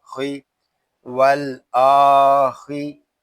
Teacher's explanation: खा ये हरूफ़े मुस्तालिया में से है, इसको पूरा पढ़ेंगे। खा हलक के ऊपर वाले हिस्से से अदा होता है